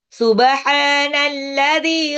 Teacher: Ingat ya ha tipis tenggorokan tengah. Alladzialnya dua harakat mad thabi.